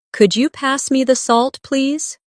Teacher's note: my voice rises on could you and falls gently at the end